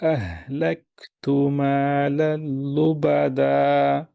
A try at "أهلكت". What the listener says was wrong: এই কাফকে আরো শক্ত করেন, তাহলে হামসা ক্লিয়ারলি হবে। আহলাক, লাক, এটা শক্ত জায়গায়। হ্যাঁ, কাফ কোথায়? শক্ত জায়গায়, উপরে, জিহ্বার গোড়া উপরে শক্ত জায়গায়। লাহ, লাক, লাক, এটা